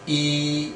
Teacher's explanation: So here the front part of the tongue is raised while uttering this sound. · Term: front close vowel